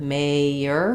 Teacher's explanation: So I think being able to recognize that we have this vowel-to-vowel linking in mayor, and you really need to make sure that you're saying that y sound to distinguish the 2